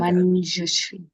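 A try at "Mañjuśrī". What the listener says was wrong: Manjushri. But I want to hear a better long vowel at the end. 2 beats. And that N, the nasal, is second varga. So it's palatal.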